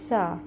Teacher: اور سین میں سی ڈی کی آواز آ رہی ہے، پتہ چل رہا ہے کہ ہماری دانت، ہماری زبان کی نوک نیچے کے سامنے کے دو دانتوں کے پیچھے لگ رہی ہے، بس آواز آ رہی ہے۔